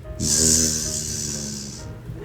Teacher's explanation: Now the Z sound, which is the same as the S, but voiced, right? The Z is a voiced sound, so you vibrate your vocal cords.